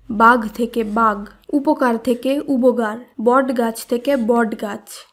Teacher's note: রাড়ি উপভাষায় শব্দের শেষে অবস্থিত অঘোষ ধ্বনি ঘোষ ধ্বনিতে রূপান্তরিত হয়েছে